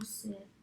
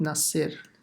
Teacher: Sad has to be pronounced with a sakin, with a sukun, and then the ra as well.